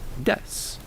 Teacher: In Japanese phonology, the vowels U and E are often devoiced, meaning they're whispered or not fully vocalized when placed between two voiceless consonants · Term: vow devoicing